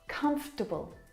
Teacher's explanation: this word just like vegetable has an extra vowel in there that we don't need to pronounce.